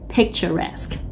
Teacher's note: trọng âm chính đó là âm tiết thứ ba là resque và âm k ở cuối